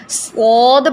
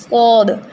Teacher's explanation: منہ کھولا جاتا ہے اس میں اور زبان کی سائڈز پیچھے لگتی ہیں۔ آپ دیکھیں گے کہ اگر آپ مرر میں دیکھ رہے ہیں تو آپ دیکھیں گے کہ آپ کی زبان اوپر اٹھی ہوئی ہے، ٹھیک ہے، ایک یہ ہو گیا۔